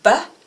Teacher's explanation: if you say but which is voiced your voice box moves